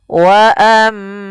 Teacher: ada mim tasydid bacaan ghunah yaitu suaranya menahan dulu suara mnya sepanjang dua harakat